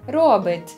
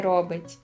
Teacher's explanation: звук «ти» в кінці дієслів доволі часто твердне. Робить, а не робить.